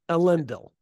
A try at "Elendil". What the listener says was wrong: Yeah, Elendil. You're saying Elendil. Emphasis on the second E, not on the first. Elendil.